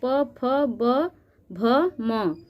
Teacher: यह पांच ध्वनियां हमारे ओठ के स्पर्श द्वारा बोली जाती हैं इसलिए इसको ओष्ठ ध्वनि कहते हैं